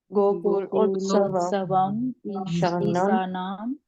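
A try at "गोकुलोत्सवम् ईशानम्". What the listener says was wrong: It's Isha, not Isa, Ishanam.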